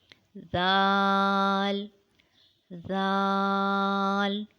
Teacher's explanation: it is pronounced when the tip of the tongue comes out and touches the tip of the top front two teeth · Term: zal